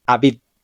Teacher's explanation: las dos Bet que tiene esta palabra representan un sonido de V suave